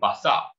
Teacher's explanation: A common sound change that's found in the speech of certain individuals is the heightening of the vowel to air, indicated orthographically like so, A-I-R, and the deletion of the final consonant.